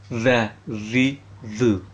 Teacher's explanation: Makhraj huruf zal adalah ujung lidah yang menyentuh ujung buah gigi seri atas. Berarti ujung lidah menyentuh ujung dua gigi seri atas, berarti yang di atas.